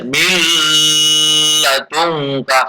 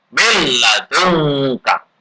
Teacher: Dan mulai ketemu lam. Harus la gunnah, tidak boleh dengung. Maka nggak benar kalau membaca min ladungka salah, tapi milladunka.